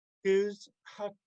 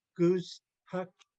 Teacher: Notice the W we don't pronounce, we just round our lips.